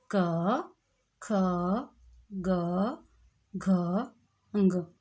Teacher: जो क वर्ग है, क ख ग घ ग, इनका जो उच्चारण है, इनका उच्चारण हम कंठ से करते हैं · जब हम उच्चारण कर रहे हैं तो हमारा जो हवा है वो कंठ से निकल रही है सीधे हमारी ध्वनि। ठीक है, उच्चारण करके मुंह में रुक करके हवा बाहर को आ रही है।